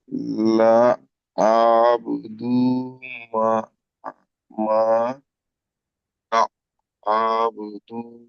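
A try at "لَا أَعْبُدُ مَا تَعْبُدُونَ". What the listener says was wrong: তা আ এ আইনের উপরে যাওয়ার হয়ে যাচ্ছে, আইনের উপর সাকিন আছে, আগের অক্ষরের সাথে যুক্ত করে পড়তে হবে। হামজা আইন যাবার আ, আ, আ। ঠিক এমন, লা আ বুদু মা তা।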